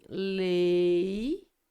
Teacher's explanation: Uma vogal E e uma semivogal I, essas duas letrinhas na mesma sílaba. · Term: ditongo